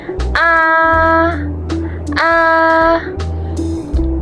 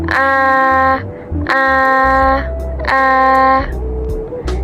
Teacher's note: saat kita mengucapkan huruf A itu lidah kita akan berada di tengah dan juga di bawah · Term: vokal rendah tengah